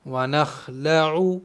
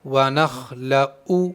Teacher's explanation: عین بیچ حلق سے ادا ہوتا ہے۔ شروع حلق یہ ہے، بیچ حلق یہ ہے، آخر حلق یہ ہے، تو بیچ حلق سے ادا ہوگا عین۔